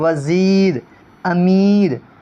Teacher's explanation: یا معروف, جو یا معروف جو یا کھینچ کر پڑھی جائے